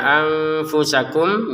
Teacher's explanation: Nun sukun bertemu fa disamarkan ya.